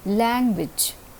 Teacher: a is receiving the prominence or the stress or the accent language the first initial syllable is receiving the stress in this word